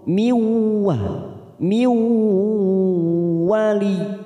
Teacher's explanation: Nun sukun bertemu waw idgham bi gunnah. Kita tekan 3 ketuk siap masuk ke huruf waw.